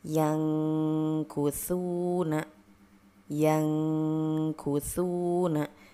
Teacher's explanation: di sini termasuk ke dalam ikhfa ab'ad sehingga dibaca lebih berbunyi ang ya